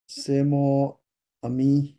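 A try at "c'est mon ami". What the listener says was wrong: সে মোনা, এই এনটা একসাথে কি হবে, লিয়াজ হবে না? মোনামি, রাইট? মোনামি, ওকে।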